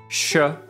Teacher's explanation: Postalveolar touches just behind the ridge